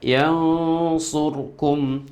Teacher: bunyi nun sukun itu menjadi samar bunyinya. Nah, ikhfa itu terjadi apabila nun mati atau tanwin baik itu fathatain, kasratain ataupun dommatain bertemu dengan salah satu huruf ikhfa.